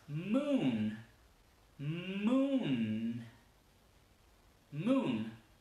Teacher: La luna en inglés se dice moon. Entonces van a ver como la M y la N son larguísimas.